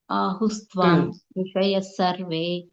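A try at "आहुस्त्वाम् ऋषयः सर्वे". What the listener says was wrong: అక్కడ కూడా ఆహుస్త్వం విడదీసినప్పుడు ఆహుస్త్వాం అన్నారు కదా, అది కూడా ఓవెల్లే కదా, అచ్చే కాబట్టి దానికి చిన్న పాజిచ్చి చెప్పండి, ఋషయః సర్వే। లేదు కలిపి చెప్తే ఆహుస్త్వాం ఋషయః సర్వే, అదొక్కటి।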